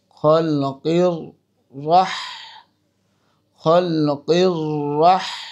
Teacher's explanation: এখানে রটা মোটা হবে, যেহেতু রর উপরে সাদ্দা হয়েছে, তাজদিদ হয়েছে, আর তাজদিদের উপরে যেহেতু জবর ফাথা হয়েছে সেজন্য এখানে মোটা করব।